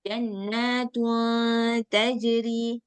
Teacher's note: suara nunnya itu enggak jelas jadi dia antara suara nun sukun dengan huruf Setelah dia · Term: ikhfa